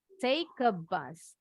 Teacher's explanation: Karena huruf E-nya hilang ya, nggak bunyi silent. Jadi bunyi K-nya nyambung ke huruf A-nya.